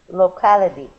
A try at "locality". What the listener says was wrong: good one more time